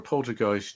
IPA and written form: ˈpoʊltərˌɡaɪst (poltergeist)